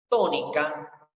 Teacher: En este caso, la sílaba to es la que tiene mayor fuerza. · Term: sílaba tónica